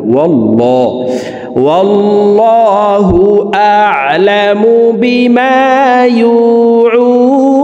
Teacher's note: يوعون প্রিয় দর্শক ওয়াল্লাহ এই লামকে ল বলে পড়তে হবে কারণ আল্লাহ শব্দের আগের হরফে জবর অথবা পেশ হইলে এই লামকে ল অর্থাৎ মোটা করিয়া পড়িতে হয় তো এখানে দেখুন আল্লাহ শব্দের আগের হরফে জবর আছে এই কারণে